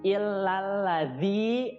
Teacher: lidahnya seperti digigit antara gigi atas dan gigi bawah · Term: huruf za